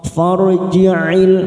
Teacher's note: Farji'il ra sukun karena sebelumnya fathah kita baca tafkhim. Farji'il masuk kata al-qamariyah.